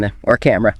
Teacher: It's the neutral lazy vowel. Your tongue is totally relaxed right in the center of your mouth. >> And you only find it in unstressed syllables, right? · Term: schwa